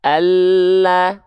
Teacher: Huruf lam itu keluar dari samping lidah depan bagian kanan, samping lidah depan bagian kiri, keduanya nih menyusur sampai ke ujung lidah.